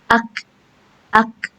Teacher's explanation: untuk huruf kaf sukun dia tidak punya sifat qalqalah atau tidak punya hukum qalqalah. Jadi, dia enggak boleh mantul.